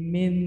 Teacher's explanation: Jadi nunnya sudah deketin ke dal. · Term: Ikhfa pertama akrob